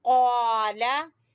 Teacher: ہم نے اس کو کیسے پڑھنا ہے، جیسے ہم وہاں پڑھ چکے ہیں، قاف زبر الف قا، لام زبر لا، قالا. ہم نے قا کو لمبا کیا لیکن لام کو لمبا نہیں کرنا